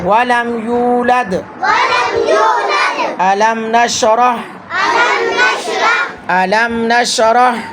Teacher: اگر میم ساکن کے بعد با اور میم کے علاوہ باقی 26 حروف میں سے کوئی حرف آ جائے تو میم کو اس کے مخرج سے بغیر غنہ کے جلدی سے ادا کیا جائے گا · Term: اظہار شفوی